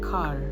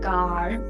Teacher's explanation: Indian English is rhotic, which means the R sound is not deleted in any position.